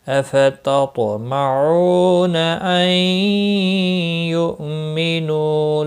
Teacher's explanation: نون ساکن کے بعد یرملون کا یا آیا ہے، ادغام باغنہ ہوگا · حمزہ ساکن کو جھٹکے کے ساتھ پڑھیں گے